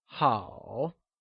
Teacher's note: it is said with a falling rising tone also known as the third tone · Good translates to 好, and it is also pronounced using a falling, rising tone